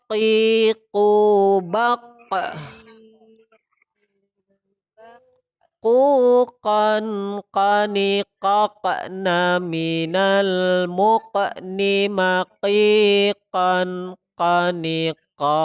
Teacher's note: Sifatnya yaitu qalqalah dan juga jahar, nafas tertahan.